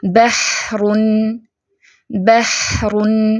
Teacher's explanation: ہا کی آواز جو ہے وہ درمیانے حلق سے رگڑ کھا کر نکلتی ہے